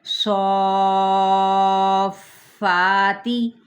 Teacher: حرف مدہ کے بعد فا پہ تشدید ہے، تو یہ انشاءاللہ تعالی مد لازم کلمی مثقل کہلائے گا